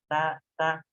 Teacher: Lalu pertanyaan yang selanjutnya itu adalah ketika ta diucapkan, si lidah itu, pangkal lidah itu atau lidah paling belakang itu, lidah paling belakang kita tidak naik, biasa aja gitu. Ta ringan, rileks gitu.